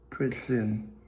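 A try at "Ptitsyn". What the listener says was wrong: That's a T. Pitson. We'll just call it Pitson.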